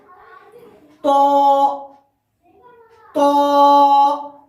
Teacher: جب زبان کی نوک ثنا علیہ کی جڑ سے ملاتے ہیں، جب تا کی مخرج، تو کی مخرج اور دال کی مخرج ادائیگی ہوتی ہے۔ لیکن ہاں تو کا جو مخرج ہوگا وہ ہوگا تو زبان کی نوک ثنا علیہ کی جڑ، لیکن اس میں پر کرنا پڑے گا، منہ بھر کر پڑھنا پڑے گا۔ جیسے کہ آپ بولیے میرے ساتھ تو منہ بھر کر، تو یعنی یہ پر حرف میں ہے۔